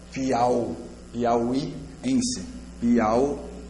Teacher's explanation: au eu pronuncio só em uma emissão de voz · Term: ditongo